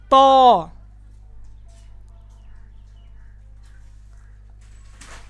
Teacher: जुबान की नोक इन सामने वाले दो दांतों की जड़ों के ऊपर लगाएंगे और इस इसको मोटी आवाज में पढ़ेंगे क्योंकि त मोटे हरूफ में शामिल है।